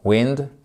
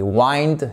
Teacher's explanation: Vous voyez ici que la voyelle est totalement différente. Ici, c'est un i court, wind, et wind, c'est une diphtongue. Presque comme le I de I, wind, I.